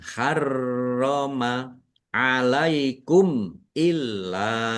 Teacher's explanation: Lakum ma harroma mim fathah alif mad thobi'i panjang dua harakat roya ada tasdidnya dibaca dobel ya ditekan harroma alaikum illa mim sukun bertemu dengan huruf alif bacaan izhar syafawi dibaca jelas